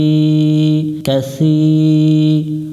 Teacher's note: কাসি, জেরের বামে ইয়া সাকিন এক আলিফ টানবা, এবং সা অক্ষর এটা জিহ্বার আগা থেকে একটু মোটা করে পড়তে হয়। সি, সি পড়া যাবে না, সি।